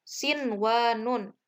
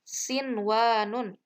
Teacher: Nah, jadi dibacanya itu tidak dimasukkan, nunnya itu tidak dileburkan ke huruf wawu, namun tetap dibaca jelas nunnya. Jadi nunnya itu berarti idhar, diidharkan.